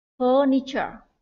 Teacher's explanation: Thứ nhất đó là từ furniture, trọng âm ở âm tiết đầu tiên ơ kéo dài